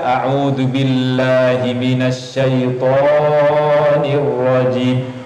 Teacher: Jadi panjangnya to sama dengan mengucapkan to dua kali. · Jadi panjangnya la dan panjangnya to sama, dua harokat. Adapun ji, panjangnya ji aslinya dua juga.